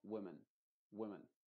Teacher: las dos vocales son la misma a pesar de que de forma escrita son diferentes y no tienen nada que ver con una I modificada igual